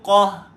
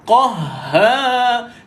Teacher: Pada ha ni, ha bersabdu. Ha ni ada totally sifat hamas dia tuan-tuan. Angin keluar secara total.